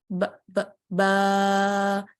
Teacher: तो क्या है, इसको मैं अलीफ लगा दूंगी, तो ब ब बा। तो जब तक बा था वो होंठों से अदा हो रहा था, लेकिन अब बा की आवाज को जब मैंने लंबा किया तो वो जो लंबी आवाज है वो अब आपकी अलजौफ से आ रही है